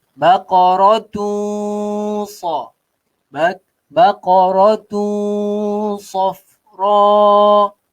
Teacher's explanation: Tanwin bertemu dengan huruf so. Huruf so ini, ikhfa hakiki. Dengung juga 2 harakat.